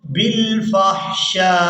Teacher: شین کو الف مدہ اور مد کی وجہ سے کھینچتے ہوئے اس حمزہ ساکن کے ساتھ ملائیں گے. شین کو جب ہم نے حمزہ ساکن کے ساتھ ملانا ہے تو جھٹکے کی جیسی آواز محسوس ہوگی · اب یہاں پر ہم نے حمزہ کو ساکن کر دینا ہے وقف کی صورت میں. شین کو الف مدہ اور مد کی وجہ سے کھینچتے ہوئے اس حمزہ ساکن کے ساتھ ملائیں گے.